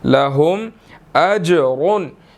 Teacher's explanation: جیم یہاں پر ساکن ہے، یہاں پر ہم نے قلقلہ کرنا ہے، اس کو ہلا کر پڑھنا ہے